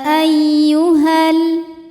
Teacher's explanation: dan lam fathah jadi di sini Alif ketemu sama lam sukun sukun ketemu sukun tidak bisa dibaca sehingga sukun pertama dilepaskan